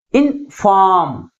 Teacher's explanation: That is second syllable is pronounced with a greater force comparing with first one. · Second syllable first syllable కంటే ఎక్కువ force గా పలుకుతుంది. That's why the primary stress is on the second syllable.